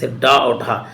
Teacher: लुंठित और प्रकंपित देखिए, उच्छिप्त मतलब होता है फेंका हुआ, उच्छिप्त का अर्थ होता है फेंका हुआ। जिन वर्णों का उच्चारण करते समय जीवा झटके से नीचे की ओर गिरती है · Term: उच्छिप्त व्यंजन